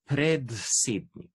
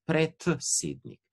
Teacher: Vidite, da imamo D pa S in pod vplivom S-ja bo D seveda se spremenil v T.